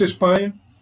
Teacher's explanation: Espanha é uma palavrinha também fácil, 3 sílabas, é uma grave.